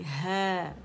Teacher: आवाज ऊपर जाएगी ह, ठीक है। हे करके आवाज नहीं आएगी, इसमें हमने इमाला नहीं करना